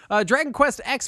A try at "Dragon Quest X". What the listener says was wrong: It's pronounced 10. It's not like Mega Man.